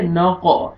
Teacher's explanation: قاف قلقلہ ہے، double sound آئے گا، قاف کو موٹا کر کے پڑھیں گے